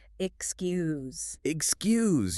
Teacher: E-X-C-U-S-E. The letters X and C create a tough consonant cluster. You have to move from a K sound to an S sound.